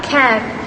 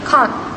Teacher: In contrast, received pronunciation uses a longer, more retracted vowel, resulting in can't.